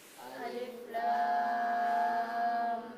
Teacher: Jadi masing-masing alifnya di bawah dibaca satu harakat. Kemudian lamnya dibaca lima harakat. Lima atau enam harakat.